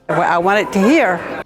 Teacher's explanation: The second feature here is a glottal replacement of final consonants. You can hear the glottal stop instead of a T.